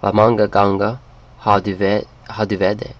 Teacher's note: With ganger you drop the R, you don't pronounce it anyway